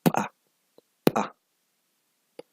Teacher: Tus dos labios se unen y de repente suelta el aire, ¿verdad? Pa, hay una oclusión del aire y de repente la sueltas, ¿verdad? Pa, pa. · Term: sonidos explosivos